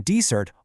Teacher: In desert, all the energy is on the first syllable. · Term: syllable stress